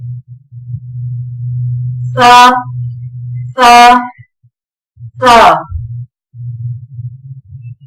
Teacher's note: نرمی کے ساتھ زبان کی نوک اوپر کے سامنے والے دو دانتوں کے کنارے سے لگے تو ادا ہوتا ہے۔